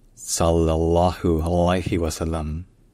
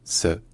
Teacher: le premier son, c'est un S emphatique. C'est-à-dire, en termes techniques, c'est un S qui est pharyngalisé.